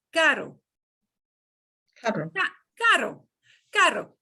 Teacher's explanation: It's a single flap of your tongue.